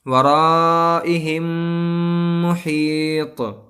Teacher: تو یہاں میم ساکن کے بعد میم آیا ہے تو ہم کو ملا کر گنہ کے ساتھ پڑھنا ہے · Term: ادغام شفوی